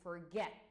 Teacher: the stress is on get